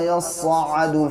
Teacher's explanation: ये हमज़ा है और जब इस पे जज़म आता है तो फिर इसे झटका देते हैं, यानी जर्क के साथ पढ़ते हैं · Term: हमज़ा साकिना